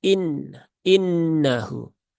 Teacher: nunnya bertasdid ada ghunah musyaddadah di situ itu maka tunaikan ghunahnya sempurnakan ya tahan dulu tiga harakat ya sempurnakan taranumnya jangan tergesa-gesa ini ghunah ini termasuk yang juga